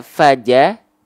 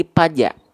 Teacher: huruf Fa itu banyak orang melafalkan dia berubah menjadi huruf P Nah kenapa karena huruf fnya tidak sesuai dengan makhraj Oke